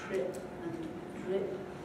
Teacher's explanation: after T or D in the same syllable, the R is made fricative, so trip and drip, get some friction. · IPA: /r/